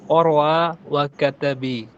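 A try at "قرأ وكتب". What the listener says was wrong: কাতাবি কেন হলো আবার? করাআ,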